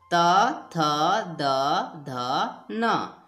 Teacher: त वर्ग बोला जाता है इसको, उच्चारण स्थान है दांत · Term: दंत्य